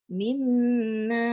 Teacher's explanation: mim tu betul tapi dengungnya tu lama sikit.